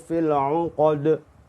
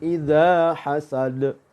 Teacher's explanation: ada Dal ya jadi ketiga huruf itu termasuk huruf Qalqalah semuanya jadi mantulnya suaranya sama yaitu eh bainal fathati Wal kasrati